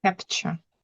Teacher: It's not really a T at all, is it? Really, it's more of a ch. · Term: ch sound